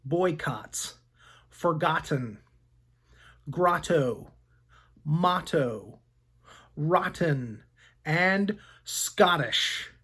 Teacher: sometimes Ott can sound like the short o ah followed by a t sound as in the words boycotts forgotten Grotto motto rotten and Scottish